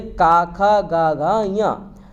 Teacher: का देखिए कंठ, कंठ से आपका का वर्ग हो गया।